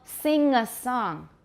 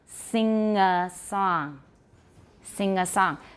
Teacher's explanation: Do we now have a syllable that starts with ng? We do. It's due to linking.